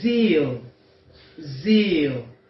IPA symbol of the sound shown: i: